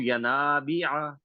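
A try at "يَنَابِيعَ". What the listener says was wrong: بی کو تھوڑا سا لمبا کرنا ہے ڈاکٹر صاحب. ینابیع،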